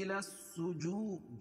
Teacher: الف لام کے بعد حروف شمسی کے 14 حرفوں میں سے سین ہے. الس اس لیے یہ لام نہیں پڑھی جا رہی